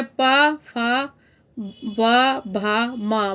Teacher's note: पा, फा, वा, भा, मा बोल के देखो होठों को छूते हुए जाते हैं, इसलिए इनको ओष्ठस्य कहा जाता है